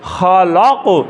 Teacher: قاف قلقلہ آ گیا تو وہ جنبش دیں گے, ہلائیں گے